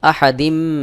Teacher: বাইনা আমজা জবর আহা জবর হাহা দাল মিম জের দিম এখানে তানভীন মিম ইদগামে বা গুন্নার হরফ এক জের উচ্চারণ করে মিম কে যুক্ত করে মিলায় পড়তে হবে এখানে গুন্নাহ করতে হবে